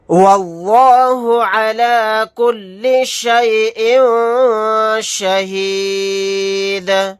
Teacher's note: یہاں پر حمزہ کے نیچے تنوین ہے، تنوین کے بعد شین آ گیا تو یہاں پر اخفا کا قاعدہ ہوگا · اس لفظ اللہ کے لام کو موٹا یعنی پر پڑھیں گے کیونکہ اس سے پہلے زبر ہے